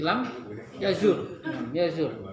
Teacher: lam yazur dipendekin saja karena kan enggak kebacakan dua sukun